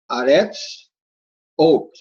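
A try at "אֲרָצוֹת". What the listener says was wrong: Aratzot. This is another one where the vowel changes. So you got Aretz, but it comes Aratzot. So it's not a ra, it's a ra.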